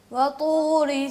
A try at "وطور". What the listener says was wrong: با نہیں، وا.